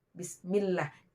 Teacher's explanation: kepala lidah dengan langit-langit keras. Keluar daripadanya huruf lam